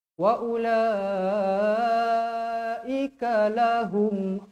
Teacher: Hum nampak ada baris mati dekat situ terus matikan dia jangan panjang-panjangkan ada baris mati matikan dia waa lahumun Alim A dua harakat